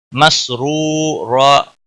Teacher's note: रा को पेश की वजह से पुर पढ़ेंगे, वाव मद्दा है, एक अलिफ के बराबर खींच कर पढ़ेंगे।